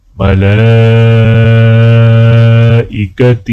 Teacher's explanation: لام کے اوپر کھڑا زبر اور مد ہے تو لہٰذا لام کو تھوڑا کھینچ کر پڑھا جائے گا